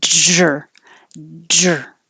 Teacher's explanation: For the DR combination, you should be pressing your tongue against the top of your mouth and dragging it